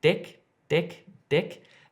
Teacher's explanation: the difference is here if I'm saying dick dick dick it's my tongue is hitting the top of my mouth just behind my teeth